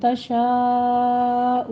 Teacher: من تشا میں نون ساکن کا قاعدہ ہے، اخفا کی کریں گے، اور شاء میں مد متصل واجب ہے، 5 کاؤنٹ کرنا ہے.